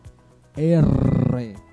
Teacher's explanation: la punta de la lengua vibra con el paladar